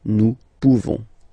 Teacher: You don't pronounce the final S.